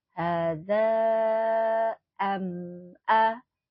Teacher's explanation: Ada mim sukun bertemu alif. Nah ini dinamakan dengan idhar safawi. Dibacanya jelas ya, jangan didengungkan, jangan am'a, enggak.